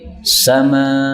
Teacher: Jadi ini hamzahnya hilang menjadi sama kalau berhenti ya. Tapi kalau lanjut tetap pakai hamzah.